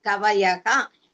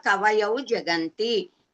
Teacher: Visarga changes to U and then to O.